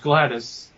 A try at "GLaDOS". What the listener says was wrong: Gladys? GLaDOS. You're saying Gladys like she's some old lady.